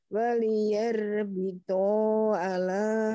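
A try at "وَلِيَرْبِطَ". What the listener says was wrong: waliyarbito tonya pendek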